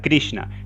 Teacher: con la punta de la lengua hacia el cerebro hacia el paladar hablando nace el sonido cerebral esta es la s de krishna